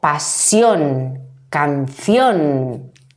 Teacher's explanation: que terminan en ión también nos encontramos en la misma situación es la unión de una vocal débil la I y una vocal fuerte la o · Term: diptongo